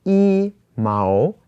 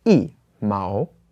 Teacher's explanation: if this is paired up with a word that has the second tone, then the 一 changes to the fourth tone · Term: tone change